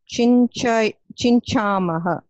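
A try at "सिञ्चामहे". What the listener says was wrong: Not chincha, it is si, sinchamaha.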